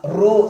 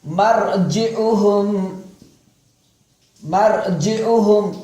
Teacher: ரா சுகுன் செய்யப்பட்டு முன்னால் ஃபதஹ் அல்லது லம்மு வந்தால் அந்த ராவையும் வல்லினமாக உச்சரிக்க வேண்டும் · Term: கனமாக